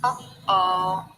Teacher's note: the glottal opens and closes and opens again and forms a glottal stop. So it's not in the word ah or, it's in between.